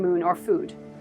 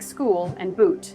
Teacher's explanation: First, we have the long oo sound, like in moon or food. This sound is drawn out, almost musical, similar to the u in flute.